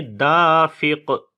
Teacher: دال کو لمبا کریں گے، الف مدہ ہے، اور قاف کے اوپر جب رکیں گے تو 2 زیر ختم ہو جائیں گی، اور یہاں پر جزم لے آئیں گے تو پھر قلقلہ کریں گے دافق. اس کو ایک زیر کے ساتھ نہیں پڑھنا، چاہے 2 پیش ہوں جیسے اوپر آیا تھا یا 2 زیر ہوں.